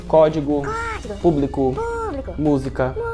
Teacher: a gente pode observar que a sílaba mais forte, a sílaba tônica, é a antepenúltima. Isso significa que existe ali, então, uma proparoxítona.